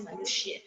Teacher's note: स्वर रहित है क्योंकि ये आधा है। दूसरा य पूरा है, इसीलिए इसमें स्वर की आवाज आ रही है, अ की आवाज आ रही है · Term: स्वर सहित